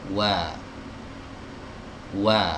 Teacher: huruf wawu adalah huruf yang keluar dari dua bibir yang dimajukan. Ya, jadi ketika kita mengucapkan huruf wawu dalam kondisi apapun ya, entah itu dia berfathah, kasroh, dhammah, sukun ya, posisi bibir itu harus dimajukan.